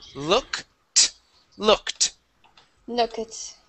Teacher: instead of saying look it, we go right to a T sound.